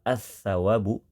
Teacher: lam pada kata as-sawabu dibaca dengan cara dimasukkan, digabungkan, melebur ke huruf sa. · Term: alif lam syamsiyah